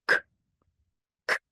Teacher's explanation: In Russian, it's a little bit more aspiration and intense, but it's pretty much very similar.